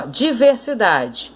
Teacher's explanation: A mais forte, então, de diversidade, ó, é a penúltima sílaba.